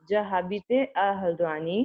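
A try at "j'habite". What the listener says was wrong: जाबीत, इसको एक साथ बोलना मैं. जाबीत, H is silent, so जाबीत.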